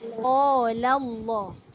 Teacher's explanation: Qa tebal, la nipis, Allah tebal balik.